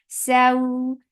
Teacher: The sound is short. Saw, this is harf lean, so make it soft and make it 2 counts long